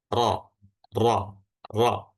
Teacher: huruf ro tafkhim atau yang tebal itu bagian belakang lidahnya menebal, naik dan sehingga rongga mulutnya menyempit